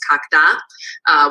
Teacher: So the third singular possessor, his, kak, has a floating high tone after its mid-tone noun with a floating high tone, and this gets realized on a following word. So his dog gets pronounced as kakda with this high tone on the following word